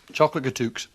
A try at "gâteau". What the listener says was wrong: Yeah, the X is silent. Gâteau. That's right.